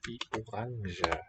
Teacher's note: He's got a voiced j, but not all speakers have that. You might hear it orange, I suppose.